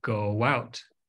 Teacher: your lips are round you insert a little W in there at the beginning of the next word